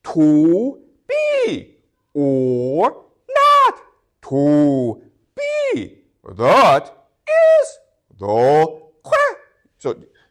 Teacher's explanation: the arrangement of syllables where you have one that is deep and then another that's high. So deep, high, deep, high, deep, high, deep, high, deep, high. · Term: iambic pentameter